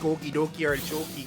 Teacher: And then there's a Midwestern, don't you know, where you kind of make your O's all nice and long and say things like okie dokie artichoke.